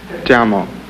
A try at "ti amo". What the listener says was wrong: A little lower.